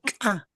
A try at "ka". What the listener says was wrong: no, ka, no, aquí de la garganta pronuncia, ka, a ver, no, igualito me estás pronunciando, igualito que esto, no, son iguales, ¿ya? Esto es ka y esto es ka, esto es ka, esto es ka, esto es a, esto es a, ¿ya? No es igual, falta. Aquí, punto de articulación. Por eso les he mostrado esa imagen.